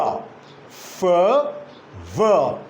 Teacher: I can utter the sound with the help of a lower lip and upper teeth like F. So F is the first sound. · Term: labiodental